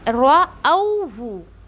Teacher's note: रअौहु, रऊहु ऐसा नहीं पढ़ना है, राहु ऐसा भी नहीं पढ़ना है, क्यों, हम हमज़ा को वाव में लीन करते हुए रअौहु ऐसे पढ़ेंगे यहाँ पर